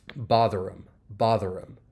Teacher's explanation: you don't really hear that h sound. It's not really uh too pronounced. · It's not really too pronounced. And then we can link that R in bother over.